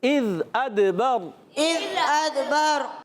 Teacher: ذال کو نہیں ہلائیں گے، دال کو ہلائیں گے، دال میں قلقلہ ہوگا